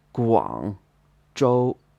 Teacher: Guangzhou would be 广州, a third tone, then a first tone.